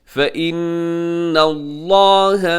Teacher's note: لفظ اللہ سے پہلے نون کے اوپر زبر ہے، اسے بھی پر پڑھنا ہے